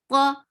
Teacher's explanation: qa is heavy and short.